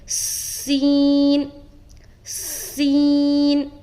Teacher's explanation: تو جب بھی آپ سین کو ادا کریں گے تو اس میں صفیریہ والی جو صفت ہے اس کا خاص خیال رکھنا ہے کہ وہ واضح طور پر ظاہر ہونا چاہیے، یعنی کہ سیٹی نما جو آواز ہوتی ہے اس طرح سے ظاہر ہونا چاہیے، سیٹی کی طرح ادا کریں گے